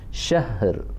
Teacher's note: matikan huruf ha, kemudian diikuti huruf ra dengan suara yang rendah